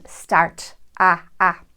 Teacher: The short A in words like hat and after and prior to the R in words like start and car widens to a phoneme that we use in General American as the first part of the diphthong I.